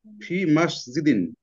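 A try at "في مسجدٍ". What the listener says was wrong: Good.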